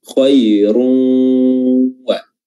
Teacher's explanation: Khairun satu kata dan waw satu kata, makanya terjadi di sini idgham, namanya di sini idgham bi gunnah karena bertemu dengan huruf waw, dan gunnahnya tetap tinggal